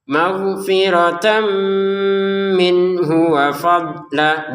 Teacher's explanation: Tanwinnya masukin ke mim dengan dengungan. Nun sukun bertemu ha dibaca jelas. H-nya ke wau pendek.